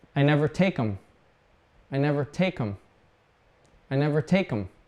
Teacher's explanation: So we normally cut off the TH.